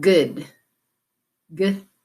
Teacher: you'll feel your voice box on and it's made at the back of your throat